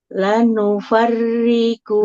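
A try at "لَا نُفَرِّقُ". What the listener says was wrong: La lamnya panjang Ibu. nufarriqu, qafnya juga nggak boleh panjang di sini karena hurufnya berharokat doma.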